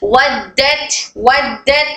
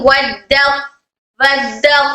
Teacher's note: तो ये कमजोर हरफ ता का इदगाम त में मुकम्मल तरीके से हो गया है।